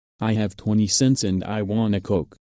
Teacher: Want a. Notice that the T is dropped when speaking fast. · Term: drop the T